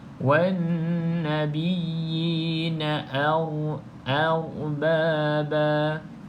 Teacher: kalau kita nak tebalkan tu huruf ra yang tebal, bukan huruf a. Okey, kalau kita tebalkan a ni akan jadi o. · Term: ra tafkhim